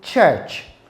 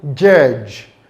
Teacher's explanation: It begins with a plosive, and we also have what we call immediate transition to a fricative. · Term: two-part consonant